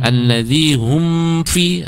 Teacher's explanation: ada mim sukun hati-hati jangan sampai itu ditahan tidak boleh dengung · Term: izhar syafawi